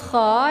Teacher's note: Kemudian kha dibaca pendek ya, kha letaknya di tenggorokan bagian atas. Kha sejajar dengan huruf gha ya. Kha jadi ditekan, ada anginnya, ada hamasnya.